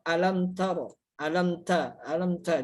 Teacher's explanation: Harusnya bacaannya jelas gitu ya. Alam tara, nggak boleh dengung atau bergunah gitu ya. Karena di sana tadi bacaannya jelas.